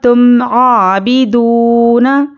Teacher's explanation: आइन पर खड़ा ज़बर बराबर है अलिफ मद्दा के, इसको एक अलिफ के बराबर खींच कर पढ़ेंगे।